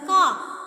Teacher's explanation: Usually we know the pronunciation of car is, the R is silent.